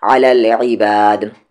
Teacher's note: دال پہ رکنے کی وجہ سے ساکن ہو جا رہا ہے تو قلقلہ ہوگا، باؤنسنگ ساؤنڈ